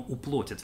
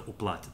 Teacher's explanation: произнесение безударного «а» как «о» как раз характерно для южных говоров